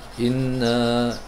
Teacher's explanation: Inna tu wajibal gunnah, wajib kita dengung 2 harakat. Kalau inna tak ada, inna 2 harakat.